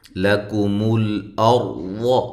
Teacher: لکم الارض، لام کو باریک، کاف کو باریک، تو یہ لام ساکنہ کو ہلانا نہیں ہے، یہ بھی باریک ہے۔ اور را کو موٹا کرنا ہے، حمزہ کو تحقیق کے ساتھ پڑھنا ہے